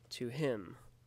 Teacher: an unstressed syllable is followed by a stressed syllable